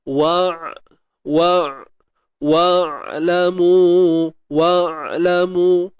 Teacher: Dan huruf ain ada sifat tawassut. Okey, tawassut iaitu suara yang tidak mengalir, suara yang tidak tertahan. Dia sedang-sedang je.